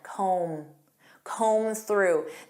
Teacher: And notice that B is silent.